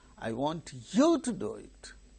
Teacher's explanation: do also a stressed syllable but it comes after the tonic syllable therefore it is very very less important that's why the stress